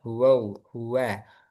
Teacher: Hati-hati, wa jangan kepengaruh tebal. Huwa, huwa.